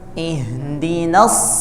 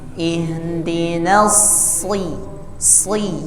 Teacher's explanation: Ihdinas langsung naik pangkal lidahnya